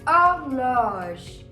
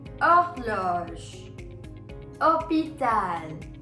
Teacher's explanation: I'm not hearing the pronunciation of H, rather I'm hearing the pronunciation of O. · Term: H is always silent